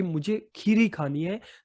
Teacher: इसमें आप खीर शब्द पर ज्यादा जोर डाल रहे हैं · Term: बलाघात